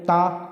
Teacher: ता में हमारी जीभ क्या होती है, दांत से टकराती है